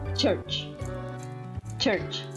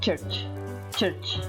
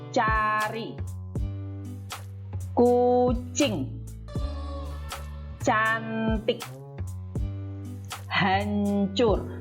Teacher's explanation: Seperti kalau Anda mengatakan church. Church ya, dengan sedikit aspirasi. Aspirasi itu tadi ya, hembusan nafas gitu ya. Jadi ada yang berhembus gitu, seperti gitu ya, church, church.